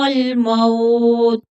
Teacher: واولین ہے تو تھوڑا نرمی کے ساتھ پڑھیں گے